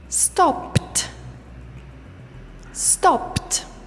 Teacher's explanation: If the last sound is voiced, the pronunciation will be d. If the last sound is voiceless, the pronunciation will be t.